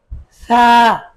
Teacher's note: জিহ্বার আগা এবং দাঁতের আগা দুটি লেগিয়ে দিয়ে তারপরে উচ্চারণ করতে হবে